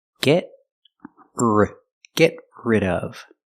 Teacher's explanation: Link the stop T to the R. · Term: Link the sounds